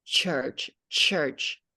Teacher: okay and then this is like in church we have this more like a sh sound with t in the beginnings